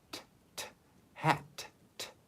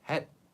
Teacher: when you pronounce the last consonant of a syllable, you do not open your mouth again to pronounce the end like English. Like if you see, for example, hat in English, you can hear t, t, hat, t, right?